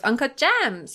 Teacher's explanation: that's just a fun Valley Girl vocal fry snippet